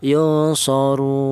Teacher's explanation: Boleh dibaca tul. Tol itu artinya panjang. Panjangnya tul itu tiga alif atau enam harakat atau enam ketukan. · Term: mad arid lukun